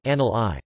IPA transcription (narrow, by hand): anɡlʲi